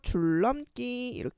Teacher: 리을하고 니은이 만났을 때 니은이 리을로 변하는 유음화 현상